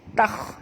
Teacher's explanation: Huruf ta di sini huruf istifal, jangan tebalkan ta, tapi kha kena tebal.